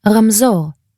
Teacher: 2 consonants made with the back of your tongue against your uvula. This is a few millimeters behind where you pronounce G.